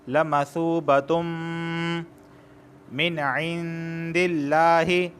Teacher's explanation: نون ساکن کے بعد عین آیا ہے، اور عین حروف حلقی میں سے ہے، تو یہاں پر صرف اظہار ہوگا، غنہ نہیں ہوگا۔